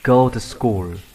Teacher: Bạn có thể đọc cái này là to hoặc một cách tự nhiên hơn, bạn đọc là t. Bạn đọc liền vào go to school.